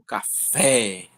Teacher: Quando a gente até vai falar, a gente fala o fé mais forte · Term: sílaba que ela soa mais forte